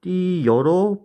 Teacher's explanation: 그럼 어는 단모음이고 여는 이중모음입니다. 여라는 이중모음에는 반모음 제이와 어가 들어가 있죠. 그럼 양쪽을 비교해 보면 어는 그대로 있고 반모음 제이가 첨가됐다라는 걸 알 수 있습니다. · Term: 반모음 첨가